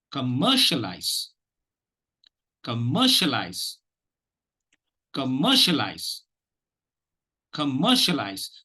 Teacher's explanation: the second syllable is being given the prominence. There is only one accented, one stress syllable.